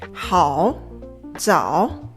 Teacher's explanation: the third tone starts pretty low, dips into the bottom, and then rises again